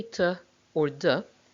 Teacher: medal metal heard hurt okay when we say to or de we press the tongue blade against the alveolar ridge block the air completely there and then suddenly release it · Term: alveolar stops